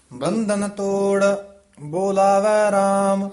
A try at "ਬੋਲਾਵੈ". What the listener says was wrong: ਇਹ ਬੋਲਾਵੈ ਬੱਬੇ ਦੇ ਹੋੜਾ ਦੀਰਘ ਉਚਾਰਨ ਕਰਨਾ ਹੈ, ਬੁਲਾਵੈ ਨਹੀਂ ਕਹਿਣਾ, ਬੋਲਾਵੈ ਰਾਮ।